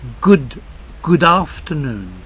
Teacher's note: I've joined the D to the a in afternoon